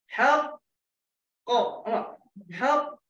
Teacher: Pangkal lidah bertemu langit belakang. So kita hold. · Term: makhraj qaf